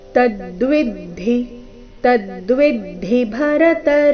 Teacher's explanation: ಆಘಾತ ಕ್ಷೇತ್ರ ಕ್ಷೇತ್ರಜ್ಯ ಸಂಯೋಗಾತ ಸಂಯೋಗಾತ ತದ್ವಿಭರತರ್ಷಭ ಕೊನೆ ಚರಣದಲ್ಲಿ ಎಲ್ಲ ಅಕ್ಷರಗಳು ರಸ್ವ ತದ್ವಿ ಶಬ್ದದಲ್ಲಿ ಮೊದಲನೇ ಎರಡನೇ ಅಕ್ಷರಗಳ ಮೇಲೆ ಆಘಾತ